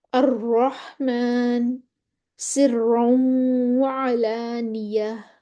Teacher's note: را مشدد پر زبر ہو پھر بھی موٹا پڑھ دینا